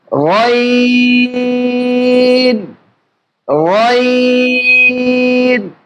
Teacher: একদম জিহ্বার গোড়া যেখানে শেষ সেখানে হলকের শেষ। তাহলে আমরা সেখান থেকে গয়নের উচ্চারণটা করব।